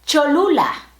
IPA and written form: ʧo.ˈlu.la (Cholula)